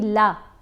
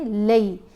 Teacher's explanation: جیسے لام کے اوپر اگر زبر ہو تو سیدھی کھڑی آواز بنے گی لا، لیکن ساتھ اگر یا ساکن بن گیا تو لا سے لئی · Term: لین حرف